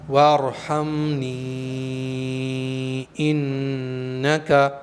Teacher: یا کو 2 الف سے 4 الف کے برابر کھینچ کر پڑھیں گے اس لیے کہ یا پر مد منفصل کا قاعدہ ہے۔